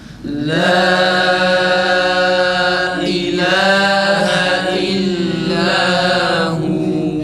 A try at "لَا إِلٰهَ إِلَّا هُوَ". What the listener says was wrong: Hemzenin harekeleri olmuyor arkadaşlar. Tam ı çıkıyor. La ilahe illa. La ilahe illa olmaz.